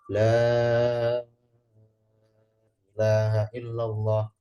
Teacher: khusus kalimat tauhid dibaca enam harakat dan itu pas hitungannya enam boleh gitu ya. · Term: takzim